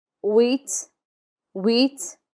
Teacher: The H is never pronounced in French, so we start with wheat